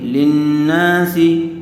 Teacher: سین کے نیچے زیر ہے اس لیے سین کو جلدی پڑھیں گے، کھینچیں گے نہیں